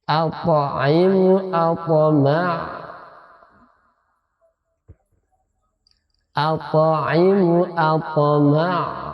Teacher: Qalqalah sughra. Qalqalah kecil, ringan karena dia di tengah-tengah.